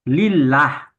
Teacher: kalimat Allah didahului dengan baris kasrah itu dibaca lah ya. Lillah tipis ya, namanya tarkik.